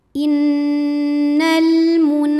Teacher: atau wajibul gunah atau Nun musyaddadah sebab ada Nun yang bertasdid cara bacanya dengung bunyi n-nya tahan sampai terasa getaran ke hidung kurang lebih dua harakat · ada hukum alif lam yang dinamakan dengan alif lam qamariah karena alif lam menghadapi huruf qamariah yaitu mim maka lam sukun dibaca jelas